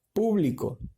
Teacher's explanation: las palabras proparoxítonas o palabras esdrújulas, la antepenúltima sílaba es tónica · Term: palabra esdrújula